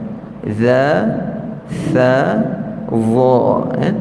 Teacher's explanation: dha tu agak sukar sikit lah, sebab kita nak keluarkan hujung lidah sikit, kemudian nak angkat lidah belakang tu, nak tebal dengan dia.